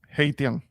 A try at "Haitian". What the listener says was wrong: SH. Put an SH there.